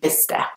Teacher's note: There is a C and an S there, but only the S sound is pronounced, so it's Bicester.